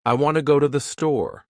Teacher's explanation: In this sentence, want and store are stressed, and the other words are said quickly and softly